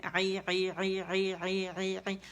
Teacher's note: عین کو وسط الحلق سے ادا کریں گے، زیر کے ساتھ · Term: عین کا مخرج